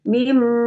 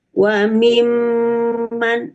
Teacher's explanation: Jadi cara membacanya harus didengungkan. Ketika membacanya mim, kita misalnya pencet hidung kita akan ada aliran ke hidung. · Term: gunnah musyaddadah